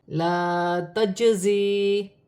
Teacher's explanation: جیم ساکن ہے، حروف قلقلہ میں سے ہے، قلقلے کے ساتھ ادا کیا جائے گا